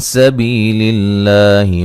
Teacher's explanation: لفظ اللہ کو باریک پڑھا جائے گا، اس سے پہلے زیر ہے